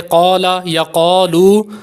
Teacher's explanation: قاف جو ہے حروف مستعلیہ میں سے ہے تو اس لیے ہم نے اس کو پر کر کے یعنی موٹا کر کے پڑھنا ہے